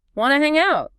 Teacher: Your voice goes up at the end. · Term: rising intonation